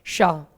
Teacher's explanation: इसके उच्चारण में जिह्वा को वायु के साथ संघर्ष करना पड़ता है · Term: संघर्षी व्यंजन